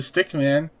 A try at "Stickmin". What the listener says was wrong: No, that sounds like M-A-N, not M-I-N.